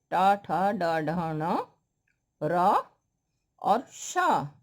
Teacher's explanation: ट, ठ, ड, ढ, ण, र और श, इन सब का उच्चारण स्थान मूर्धा होता है